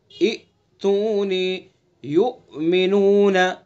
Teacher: جھٹکے سے پڑھا جائے گا، الف کے اندر جھٹکا نہیں لگے گا